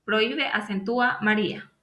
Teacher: Según la regla de acentuación, no debería llevar acento ortográfico, pero lo tienen porque son hiatos de vocal abierta cerrada, donde la vocal cerrada es la que lleva la fuerza